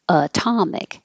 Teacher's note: If the word is atomic, the T is still between two vowels, two voiced sounds, but it does not change to D because it is in the stressed syllable, atomic. So remember, the T can only change to a D if it's between two voiced sounds and it's in the unstressed syllable.